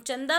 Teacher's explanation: शब्द बना मंदा आगे चंदा जब हम चंदा बोलते हैं तो च के बाद न की आवाज आ रही है इसीलिए च पर लगेगा बिंदु